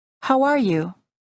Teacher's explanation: Insert a short W sound after the word how and link the words together.